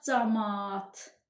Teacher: Camaat sözündə də eyni ilə A hərfinin biri tələffüzdə düşəcək. Olacaq camaat.